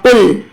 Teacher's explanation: تو قل قوف سے ادا ہوگا، قل، کل نہیں پڑھیں گے، کاف نہیں پڑھیں گے، قوف پڑھیں گے۔ اب یہ قوف ہے، موٹا قوف، اس کو ہم پر پڑھتے ہیں۔